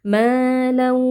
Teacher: Di sini tanwin bertemu dengan huruf waw, hukumnya idgham bi gunnah. Tanwin kita masukkan ke dalam waw dengan disertai dengung. Malau, jadi ada suara yang masuk ke rongga hidung.